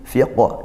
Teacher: Fiqo dibaca mantul qalqalah kubra.